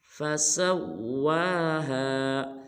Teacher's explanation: سین کو واو مشدد کے ساتھ ملائیں گے اور واو کو ایک الف مقدار لمبا کریں گے